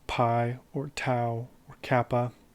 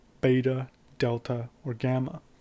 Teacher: you have the unvoiced form which is PI or tau Kappa you have a voiced form beta Delta or gamma this is because PAH doesn't use your vocal cords but does